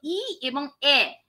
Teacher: উচ্চারণ করার সময় জিহবা কি হচ্ছে তালুতে অবস্থান করছে